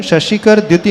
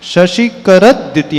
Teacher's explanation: याने extra द का slightly pronunciation होगा चकि बाद में द है तो द द कैसे बनता है